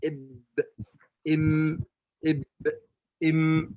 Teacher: المخرج الثاني بإطباق الشفتين يخرج الباء والميم